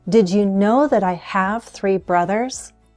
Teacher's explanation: I'm stressing the main verbs, the number, and the noun. Know, have, 3 brothers.